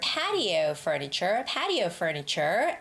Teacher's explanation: Please make sure this is where the meaning phrase stops, to protect your patio furniture, patio furniture, and you stop, but you do not go down. The intonation has to rise up because it's not the ending.